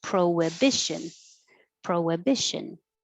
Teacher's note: So it doesn't look like it, but your lips make a round pro-wi, and it makes a W